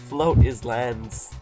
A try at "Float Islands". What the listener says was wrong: Float islands. Not is floating islands. just float.